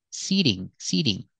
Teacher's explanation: The T is between vowels, so in this word, we hear the fast T.